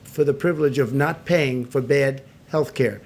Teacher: the content word privilege is still the stressed word, and the grammar words for, the, and of are still weakened.